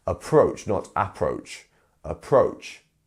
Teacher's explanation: So we have two syllables, approach. And our second syllable is the one that is getting the stressed syllable here.